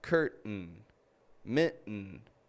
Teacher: All of those words have a glottal T at the very end. and it's quiet.